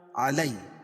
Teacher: یا ساکن سے پہلے زبر ہو تو یا کو نرم آواز کے ساتھ جلدی پڑھیں گے، اس کو یائلین کہتے ہیں